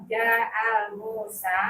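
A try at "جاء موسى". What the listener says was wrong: Jangan pakai alif lam, jangan. Musa.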